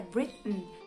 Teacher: Britain, esse som é um pouquinho mais específico dos Estados Unidos e eles fazem a posição do T, mas acabam não soltando, acabam não pronunciando esse T, então fica Britain.